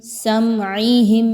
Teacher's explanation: میم ساکن کے بعد عین آ گئی، اظہار شفوی، کوئی غنہ نہیں کرنا.